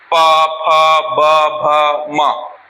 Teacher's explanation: मा में ओठ बंद होता है